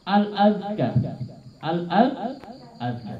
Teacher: Lidahnya keluar dikit dengan menekan kedua gigi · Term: Zal